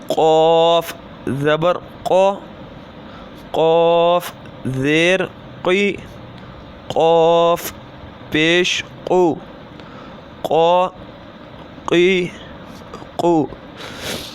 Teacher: قاف ہے وہ زبان کی جڑ اور تالوں کے نرم حصے سے ادا ہوتا ہے